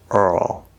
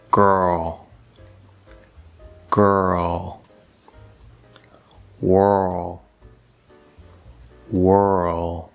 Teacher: we can actually place a schwa sound between the er and the ul or you can more tightly blend them together earl either way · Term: l colored er vowel sound